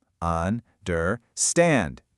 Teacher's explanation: The energy, the stress is only on that third syllable.